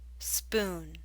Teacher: The ooh in spoon is longer.